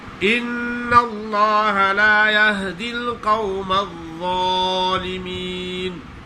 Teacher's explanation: ظالمین زا پڑھ لیتے ہیں، ضا نہیں پڑھتے